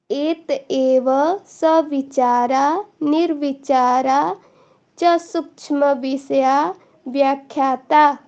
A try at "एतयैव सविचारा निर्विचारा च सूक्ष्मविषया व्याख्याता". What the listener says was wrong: तो यहाँ पे कोशिश करना आप रिकॉर्डिंग में सुनना मेरा जो प्रोनाउंस है और जो आप कर रहे हो। एत एव नहीं है, यहाँ पे या है तो या का उच्चारण करने की कोशिश करना। वैसा एव भी पढ़ सकते हो आप यदि आप संधि विच्छेद करके पढ़ते हो।